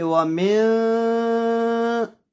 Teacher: آدھی آواز ناک میں جا رہی ہے. وَمِن شَرِّ، اس کو اخفا کہتے ہیں.